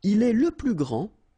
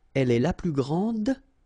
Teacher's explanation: grand, so you don't pronounce the final D